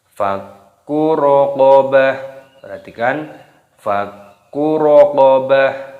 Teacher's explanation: Di sini terdapat huruf kaf yang berharokat tasdid, ini dimasukkan, diidghamkan, ditekan. Cara membacanya fakku raqabah, jangan dikolkolah fakku, tidak boleh.